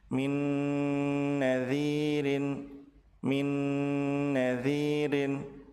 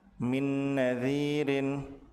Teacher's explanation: Apabila nun sukun bertemu dengan nun, maka nun yang pertama dilebur ke nun yang kedua dengan cara ditahan dua harakat disertai dengan ghunah.